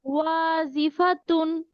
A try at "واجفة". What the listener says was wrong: জিম শক্ত হবে, জিম জের জি, ওয়াজিফাতুন।